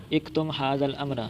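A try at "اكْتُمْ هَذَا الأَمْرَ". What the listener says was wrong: उक्तुम हाज़ल, इक्तुम नहीं, उक्तुम छुपाए रखना ये मामला, यानी अभी किसी को बताना नहीं, अभी वक्त नहीं बताने का।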